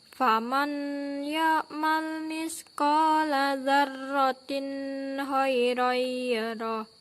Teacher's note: tanwin bertemu dengan huruf H sehingga hukum bacaannya yaitu idhar halqi yang harus dibaca dengan jelas